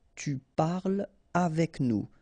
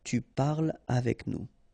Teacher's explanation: So no liaison here between parle and avec